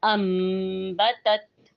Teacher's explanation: نون ساکن یا تنوین کے بعد اگر با آ جائے تو اس نون کو میم سے بدل کر غنے کے ساتھ پڑھنے کو اقلاب کہتے ہیں۔ یہاں پہ غنہ ایک الف کے برابر کیا جائے گا اور غنے سے پہلے حرف کو لمبا نہیں کیا جائے گا اور نہ ہی اس میں نون کی ملاوٹ کی جائے گی۔